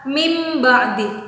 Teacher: sebut tanwin atau nun sukun yang berhadapan dengan huruf ba maka nun sukun atau tanwin itu dibalikkan dirubah menjadi huruf mim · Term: iklab